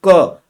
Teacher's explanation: जैसे अगर हम बात करें क की, तो क, अब क बोलने में हमें नाक की जरूरत नहीं है, नाक बंद कर लो फिर भी क बोल पाओगे। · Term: निरानुनासिक